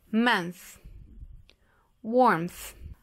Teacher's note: Aqui nós temos o som entre os dentes, só com o arzinho, que é esse aqui.